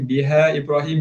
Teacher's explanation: biha panjang 4 atau 5 harakat